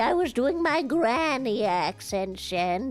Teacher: You don't really use your tongue the way you do in the same way when you're not speaking like a granny. And then you make sure at the end of it, you put a little vocal fry